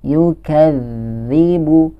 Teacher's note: Nah, di depan di sini kita bertemu dengan huruf za yang bertasydid. Kita harus membacanya dengan ditahan terlebih dahulu. Yukadzibu. Ya, jadi jangan langsung ditabrak.